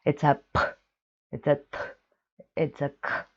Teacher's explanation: There's a real H sound coming after the consonant.